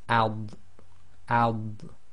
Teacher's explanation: the dad is normally pronounced with the left side of the tongue touching the upper left teeth. So even when you do it with sukoon, you should feel the left side of your tongue touching the upper left teeth.